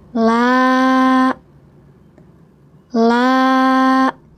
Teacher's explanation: Panjangkan dua ketukan karena ada alif sebelum fathah.